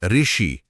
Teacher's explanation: आज हम इसे व्यंजन र और स्वर ई को मिलाकर ऋ की तरह बोलते हैं। जैसे ऋषि बोलना हो तो ध्वनि र से शुरू होती है।